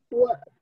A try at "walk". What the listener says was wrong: Walk. Un poquito más A.